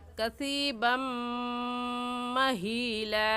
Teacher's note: कसीबन महीला कहना गलत है, बल्कि इदगाम करके पढ़ेंगे और ऐसे कहेंगे कसीबम, बा को मीम के साथ मिलाकर कसीबम महीला।